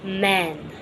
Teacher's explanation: closing the lips and making nasal consonant